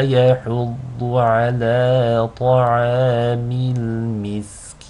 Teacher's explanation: One note about muds, make sure that the noon, the nasal sound of the noon, doesn't kick in prematurely. So in the word miskin, when you are elongating with a ya, ki, there should not be any nasal sound.